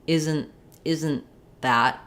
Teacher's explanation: isn't tends to use a stop t and a very short end so i'm going to probably have my tongue in the position